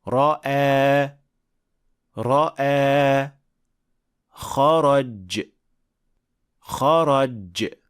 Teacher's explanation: Har bir roda faqat bitta titroq bo'lishi kerak.